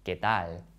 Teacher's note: Here we have no air for the K sound and a light L at the end of tal, ¿Qué tal? And we don't say ¿Qué tal?